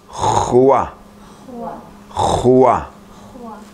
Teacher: Guttural sound resembles someone clearing their throat. · The scratching noise comes from the roof of the mouth. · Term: guttural sounds